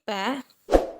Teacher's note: இதழ்கள் இரண்டும் ஒட்டுவதால் பிறக்கும் எழுத்து